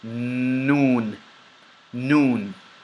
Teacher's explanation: This letter specifically is characterized by air and sound coming from the nasal passage, but your lips remain open.